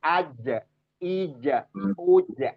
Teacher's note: jim, aj, ija, uj, adanya di tengah lidah